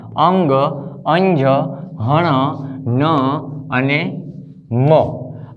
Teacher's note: આ 5 અંગ, અંજ, હણ, ન અને મ, આ 5 વ્યંજન છે એ અનુનાસિક વ્યંજન કહેવાય. અનુનાસિક એટલે કે જેનું ઉચ્ચારણ નાકમાંથી થાય.